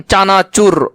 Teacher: র একটা কম্পিত ব্যঞ্জন